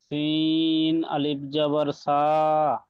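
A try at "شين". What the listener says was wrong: এখানে একটা সিন নুক্তা পড়েনি।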